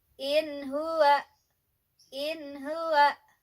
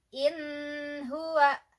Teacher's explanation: Itu yang betul ya, dibaca jelas nunnya berhadapan dengan huruf H, jadi jelas